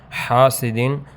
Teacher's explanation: الف سے پہلے زبر ہے، یہ الف مدہ ہے، ایک الف 2 حرکات تک لمبا کریں گے